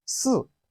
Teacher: It has the falling tone of Chinese language, the falling tone, which is the fourth tone.